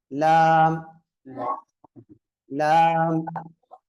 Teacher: நுனி நாவிலிருந்தும் வாயின் முன்புறத்திலிருந்தும் வெளியாகுது